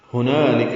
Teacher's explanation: ہا اقصی حلق سے نکالیں گے